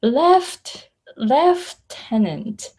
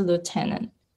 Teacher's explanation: in british english it has f in it